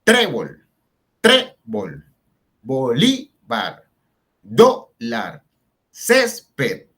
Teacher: Esas palabras, miren que no terminan ni en N, ni en S, ni en vocal y llevan la fuerza en la penúltima sílaba, o sea, la que está antes de la última. Al llevar la fuerza ahí y no terminar ni en N, ni en S, ni en vocal, hay que colocarles tilde.